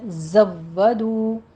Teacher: زئی کی آواز قوی آواز کے ساتھ آپ نے سیٹی کی آواز کے ساتھ پڑھنا ہے، زودو، زو و کہتے وقت ہونٹوں کو گول کیجیے، واؤ کے اوپر تشدید ہے، سختی سے ادا کرنا ہے.